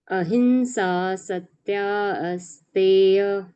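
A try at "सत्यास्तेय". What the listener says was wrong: Not asteya. Satyasteya Brahma. There is, we cannot say asteya. There is no a here. Satya, because a has joined ya and ya has become ya. Because of the Sandhi rules of Sanskrit.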